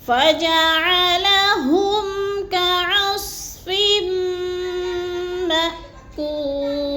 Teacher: میم حمزہ زبر ما، جھٹکا دے کے پڑھنا ہے، کول، کوپ وہ مدہ ہے، اس کو تھوڑا سا ہم نے کھینچ کے پڑھنا ہے۔